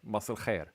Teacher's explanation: what is actually being said looks a lot like it's a syllabic L. Like it's mas il-khair.